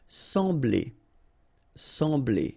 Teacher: So EM will give you the sound en. Okay, so you don't pronounce the M, you just get the sound en.